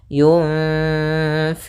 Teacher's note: Kemudian di sini ada bacaan ikhfa pada lafal nun mad yang bertemu dengan fa, yaitu cara membacanya adalah nunnya kita samarkan kepada huruf fa, kemudian ditahan dengungannya atau gunnahnya. Sepanjang 2 harokat.